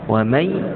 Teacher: Nun tidak ada tanda tu, maksudnya dengung, jumpa dengan ya, masuk terus dalam ya, kita panggil idgham ma'al ghunnah.